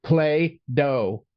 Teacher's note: I'm not even saying a D. There is no sound there. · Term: glottal stop